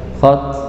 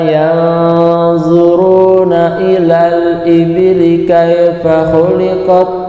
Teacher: sifat hamas, berupa suara yang mengalir ketika diwakafkan. Nah, itu terkadang kita kan membacanya tidak memberikan hak sifat huruf itu sehingga suaranya tidak mengalir.